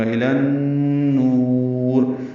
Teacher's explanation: لام کو نون سے ملائیں گے، ادغام شمسی ہے، غنہ ہوگا، نون مشدد ہے اس لیے غنہ ہوگا